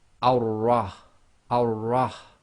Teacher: So we read the Hamzatul Wasl as if it's got a fatha, but because we've now got the shadda on top of the Ra, the shadda has to join to a sound before it. So we're going to effectively completely skip the lam. So we're going to join the fatha, which is going to be on top of the wasla, and join that to the Ra.